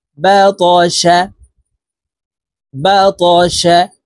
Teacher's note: কলকলার হরফ উপরের দিকে ধাবিত করে ধাক্কা দিয়ে উচ্চারণ করব